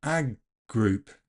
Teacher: The D in ag group can become an unreleased G, so ag group.